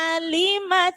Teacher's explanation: hati-hati huruf ain di awal, hati-hati terselip pada huruf hamzah